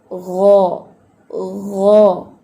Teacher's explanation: حلق کے ادنا پارٹ سے. حلق کا جو اپر پارٹ ہے یہ وہاں سے ادا ہوتا ہے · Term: ادنا حلق